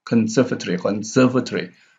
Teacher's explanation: Serve here, the stress is on serve.